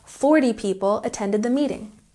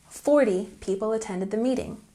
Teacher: don't forget to put the emphasis on the first syllable